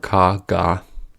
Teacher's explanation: The back of the tongue blocks the air for ka, ga.